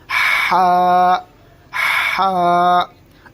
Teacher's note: جیسے میں نے آپ کو اپنی دیسی بھاشا میں بتایا ہے آپ کو کہ حلق سے، جس طرح سردی میں ہمیں سردی جب محسوس ہوتی ہے تو ہم کرتے ہیں اس طریقے کی ہوا ہمیں نکالنی ہوگی